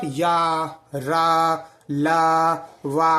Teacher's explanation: जब आप या रा ला वा बोलेंगे तो आपको कंपन महसूस होगी और यदि कंपन है तो अल्प प्राण के साथ सघोष ठीक